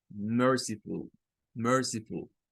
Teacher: esa U vamos a tener un sonido de un schwa.